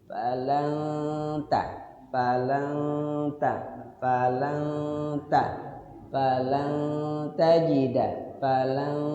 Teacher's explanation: H cara baca ikhfa tuh ya nunnya disamarkan. Saat kita menyamarkan nun, lidah kita sudah siap-siap di huruf ta.